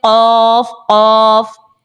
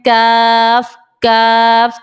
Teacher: कफ को आपने मोटा पढ़ना है और काफ को बारीक पढ़ना है · جب بھی زبان کی جڑ تالو کے نرم حصے سے لگتی ہے تو قاف ہمارا نکل آتا ہے, اور زبان کی جڑ جب تالو کے سخت حصے لگے تب کاف نکلے گا · قاف کو آپ نے موٹا پڑھنا ہے اور کاف کو باریک پڑھنا ہے. خود بخود اس کا جو مخرج ہے وہ اچھی طرح سے آپ نکال پائیں گے.